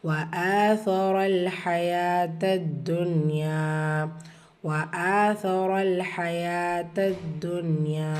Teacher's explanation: وآثر الحياة الدنيا وآثر الحياة الدنيا வாவ் ஃபத்ஹா வா ஆ ஹம்சா கூடவே அலிஃப் மத்தா இருக்குது. இரண்டு ஹரக்கத்தால் நீட்டம் கொடுக்கணும்.